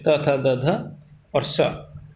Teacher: त थ द ध और स दंत उच्चारण स्थान है